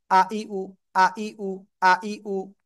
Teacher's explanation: হামজা জবর আ, এর উপরে জবর যদি আসে, হামজা জবর আ, হামজা জের ই, হামজা পেশ উ, শক্ত আকারে পড়তে হয়।